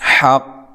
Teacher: حق یہاں وقف کی صورت میں خوب قلقلہ کرنا ہے کیونکہ مشدد حرف ہے